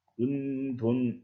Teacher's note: 은돈이라든가 오리발, 콩밥, 기와집은 뒤에 첫소리가 된소리로 발음되지 않아요. 이런 경우에는 사이소리 현상이 일어나지 않은 것입니다.